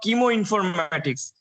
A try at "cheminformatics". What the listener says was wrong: Chem informatics, not chemo. Chem. Not chemo. Chem informatics.